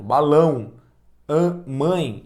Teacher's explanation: as vogais nasais Ao serem pronunciadas deixam os sons passarem pelo nariz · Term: ditongo nasal